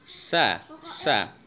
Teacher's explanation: huruf Sin keluar dari ujung lidah yang ditempatkan di antara rongga Gigi atas dan Gigi bawah sah-sah jadi Gigi atas dan Gigi bawah itu mendekat Hai kemudian